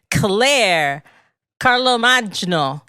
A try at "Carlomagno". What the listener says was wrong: It was close. G is silent. Carlomagno.